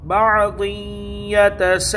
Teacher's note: تو تنوین کے بعد حروف یرملون میں سے یا آئی ہے تو یہاں ادغام ہوگا اور گنہ کے ساتھ ہوگا، ادغام مع الغنہ، گنہ کے ساتھ ادغام ہوگا، کیونکہ تنوین کے بعد حروف یرملون میں سے یا آئی ہے۔